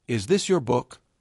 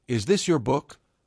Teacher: But when they said, "Is this your book?" with a rising intonation, suddenly it felt like a real question